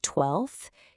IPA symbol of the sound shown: θ